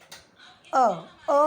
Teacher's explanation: अ बोलने में मुझे कहीं पे भी मुंह को बंद नहीं करना पड़ रहा, होठों का उपयोग नहीं करना पड़ रहा, जीभ का उपयोग नहीं करना पड़ रहा है, तालु और कंठ का करना पड़ रहा है मुझे, है ना।